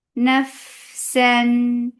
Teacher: Fa will get sifa of rakhawa and hams. Nafsan. This is idhar and ruling idhar and sifa is tawassut in here.